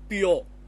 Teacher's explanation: it will be U gliding to O So it will be pure okay that's so now 12 sounds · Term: Glide